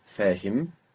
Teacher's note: Now this is a different H. It's not a breathy H. It's like an English H. Much thinner